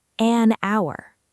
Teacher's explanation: It starts with H, a consonant letter, but we say an hour. Because the H is silent, so the first sound is actually ow, like hour.